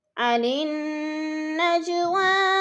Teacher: عن النجوى، نون کے اوپر غنہ کرنا ہے، سختی سے جما کر پڑھنا ہے کیونکہ نون مشدد ہے، اور نج جیم پر قلقلہ ہے، اس کو ہلا کر پڑھیں گے۔ حروف قلقلہ یعنی حروف قلقلہ میں سے جیم ہے اور ساکن ہے تو اس کو ہلا کر پڑھنا ہے۔